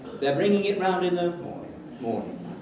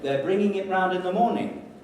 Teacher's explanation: bringing it round in the morning what is wrong used to low fall instead of a high fall · I used a low fall instead of a high fall.